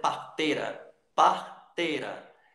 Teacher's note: O i, como tem um som fraco, você joga ele fora, na fala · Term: semivogal